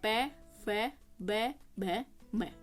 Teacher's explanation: प वर्ग को बोलते टाइम दोनों होठों का यूज़ किया है